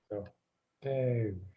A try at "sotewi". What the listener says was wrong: Did you say the whole word? Sounded like you stopped at Sote.